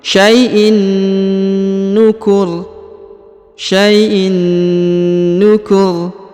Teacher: Lalu kemudian ditekan lalu ditahan ya. Langsung melebur ke huruf na yang berharokat tasdid ini.